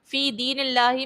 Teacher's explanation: اللہ کے لام سے پہلے زیر ہے، تو یہاں پر اللہ کے لام کو باریک پڑھیں گے